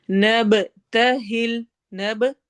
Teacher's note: با پہ قلقلہ ہوگا، ایکو ساؤنڈ ہوگی